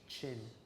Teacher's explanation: It's a T followed by a sh.